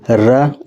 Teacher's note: इसके उच्चारण में जीभ 2 या 3 बार कंपन करती है। जीभ के लगातार 2 या 3 बार कंपन करने से यह र वर्ड उत्पन्न होता है, इसलिए इसे प्रकंपित वर्ण कहा जाता है।